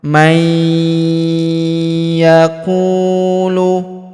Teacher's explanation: yaquulu dengan dengung ya kita tahan dan tekan serta dengung dua sampai 3 harakat · Faminanasi huruf nun sukun bertemu huruf ya berharakat tasydid maka nun sukunnya melebur ke huruf ya yang berharakat tasydid. Kita tahan dan tekan.